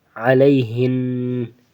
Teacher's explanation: نون کے اوپر شد ہے تو اس لیے یہاں پہ غنہ ہوگا، ہمیشہ غنہ ہوگا، چاہے وقفاً ہو یا وصلاً ہو۔ علیہن یہ وصلاً ہے اور علیہن یہ وقفاً ہے، تو اس میں بھی غنہ ہی ہوگا۔